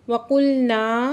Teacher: अलिफ से पहले ज़बर है तो ये अली मद्दा दो हरकत खींच के पढ़ रहे हैं।